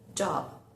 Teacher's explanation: Fíjense que no suena o no se escucha, pero yo los labios los junto, no me quedo en job.